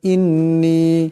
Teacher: ইন্নী এখানে নুনের উপর তাসদীদ আছে, এই নুন মুশাদ্দাদকে একালে পরিমাণ গুণনা করিয়া পড়তে হবে।